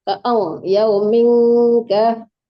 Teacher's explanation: fi yaumin itu hukumnya ikhfa hakiki didengungkan ya Bunda. Jadi yaumin jangan ditekankan nun ya.